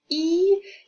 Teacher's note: Thus, for example, when pronouncing the sound E, it implies that the front part is slightly raised towards the palate